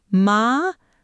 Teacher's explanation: A rising tone, like you're asking a question